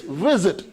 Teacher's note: In visit, the first syllable is now stressed. Second syllable is not stressed. So accordingly, in this case, visit goes to visited without doubling the last consonant because the second syllable is not stressed.